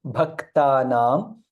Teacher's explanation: Bha Mahaprana, half ka and ta